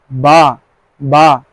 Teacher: বা বলার সময় আমাদের ঠোঁট দুটো যেন একসাথে হয়ে যায়।